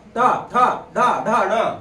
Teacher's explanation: हे दंत ते बघा दाताला लागते. हे त थ द ध न जीभ दाताला लागते